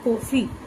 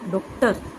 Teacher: इसका उच्चारण आ तथा ओ के मध्य का प्रतीत होता है।